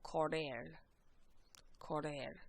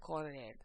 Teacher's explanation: now notice there's the double R here, so if you guys can roll your R's, you'll want to do so.